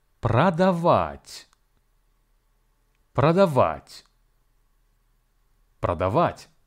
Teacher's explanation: The word продавать has three syllables: про, да, вать, and the stress falls on the last syllable. Please be advised that the first syllable про is actually pronounced as пра